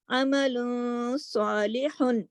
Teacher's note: عمل تھوڑی سی آواز ناک میں چلی گئی، لیکن صالح اس کو واضح طریقے سے پڑھا ہے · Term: اخفا